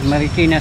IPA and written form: mərɪˈkɪnə (Marikina)